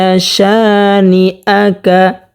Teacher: জবরের বাম পাশে খালি আলিফ হওয়ার কারণে এক আলিফ পরিমাণ টানিয়ে পড়তে হবে